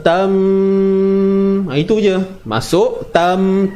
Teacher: Huruf ta ni masuk dalam mim, ataupun hakikatnya tanwin tu masuk dalam mim dan dengung 2 harakat. Bi ghunnah, itu maksud dia. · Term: idgham bi ghunnah